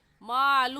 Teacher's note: اگلا لفظ مالہ ہے، اس کے اوپر الٹا پیش ہے، اسے کھینچیں گے